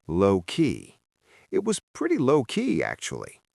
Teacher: Notice how the stress falls heavily on the word low.